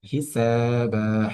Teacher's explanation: হিসাবা শব্দটির মধ্যে সিনে আমরা এক আলিফ পরিমাণ টান দিচ্ছি, এর কারণ জবরের পাশে খালি আলিফ মাদের হরফ এবং বায়ের মতো সেম নিয়মটা রিপিট হবে।